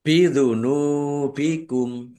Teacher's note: nun dumah wawu sukun mad thobi'i panjang dua harakat